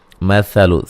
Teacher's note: سا کو نرم ادا کریں گے اور اس کو لمبا نہیں کرنا ہے